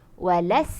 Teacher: Dia tak mampu nak senyum. Walau kalau kita sebut sin, walas, kita mampu senyum. Sebab kita punya pangkal lidah tak angkat, tepi lidah tak angkat